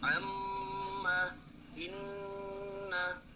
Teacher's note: Dari huruf mim dan nun. Kalau huruf mim dan nun maka itu dibaca ghunnah